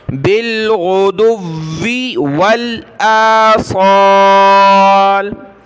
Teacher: एक वाव ख़त्म हो रहा है एंड और दूसरा वाव स्टार्ट हो रहा है, 2 वाव हैं, दोनों को साफ तरीके से जाहिर करके पढ़ना है।